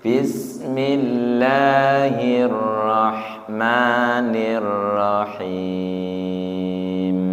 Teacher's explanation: Jadi bismillahnya turunkan aja nggak apa-apa. Bismillahnya rendah.